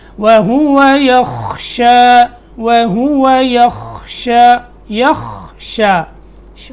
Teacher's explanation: يَخْشَى خا اس کو پکڑنا ہے، یہاں قلقلے کی آواز نہیں آنی چاہیے